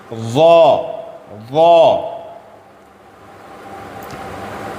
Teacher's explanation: زبان کی نوک اوپر والے دانت سے ٹچ کر کے موٹی آواز میں پڑھنا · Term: ظا کا مخرج